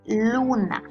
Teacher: su sílaba tónica se encuentra situada en la penúltima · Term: palabra grave